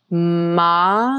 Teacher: the lips touch on the ma